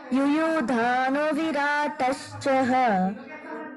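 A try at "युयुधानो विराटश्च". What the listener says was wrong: You should not add Visarga where there are no Visarga. Okay? You are adding a Visarga here.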